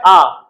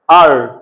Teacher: ব্রিটিশরা এটাকে উচ্চারণ করে আ, আমেরিকানরা উচ্চারণ করে আর